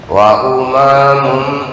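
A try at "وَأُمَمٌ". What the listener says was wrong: Pendek.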